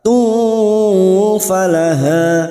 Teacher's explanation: Ukhtun duma tanwin bertemu fa'ik, fa hakiki kita samarkan bunyi duma tanwin pada huruf ta, kita samarkan dan mendengung selama 2 atau 3 harokat